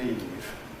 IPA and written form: iːv (Eve)